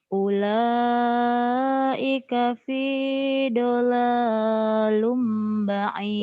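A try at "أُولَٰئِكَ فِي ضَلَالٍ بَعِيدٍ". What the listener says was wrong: dolalim bukan dolalum, dolalim. Ulaika fi dhalalim ba'id.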